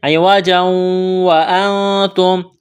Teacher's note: اخفا کریں گے، نون ساکن کے بعد تا ہے، حروف اخفا ہے